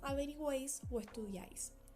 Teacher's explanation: Tiene que ser dos vocales cerradas y una abierta. y el acento siempre va a recaer sobre la vocal abierta que va a estar en el medio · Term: triptongos